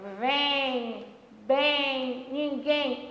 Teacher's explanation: No finalzinho, o M funciona como um U no ão e funciona como um I no EM. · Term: ditongo nasal